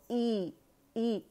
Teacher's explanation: ये जो हमज़ा है ये इंग्लिश लेटर ई की साउंड देगा, और हम अक़सुल हल्क पे जाएंगे